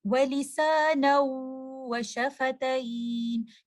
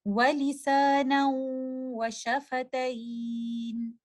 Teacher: آپ اس غنہ کو کچھ دیر کے لیے ہولڈ بھی کریں گے، جس طرح ہم اظہار میں پڑھ چکے ہیں کہ ہم اس کو زیادہ دیر ہولڈ نہیں کریں گے، لیکن ادغام کی صورت میں آپ اس غنہ کو کچھ دیر ہولڈ کریں گے